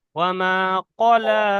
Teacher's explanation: কফটা পুর অক্ষর, মুখটা একটু গোল মতন হবে।